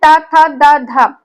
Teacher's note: जो आपकी जीभ है ये दांतों के बीच में आती है, तो इसको क्या बोलेंगे, दंत्य बोलेंगे। इसको दंत्य बोलेंगे, दंत्य यहाँ पर हो जाएगा।